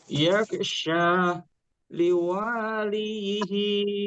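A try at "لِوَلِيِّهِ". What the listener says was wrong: Nah, hati-hati wa-nya agak panjang. Masih kepanjangan, Pak. liwaliyihi.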